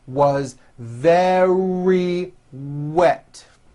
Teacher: very starts with a V sound followed by a strong R